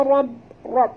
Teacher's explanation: ra baris atas kena baca tebal dan jut pada ba di atas ba, ada tasydid.